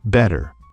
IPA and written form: ˈbɛɾər (better)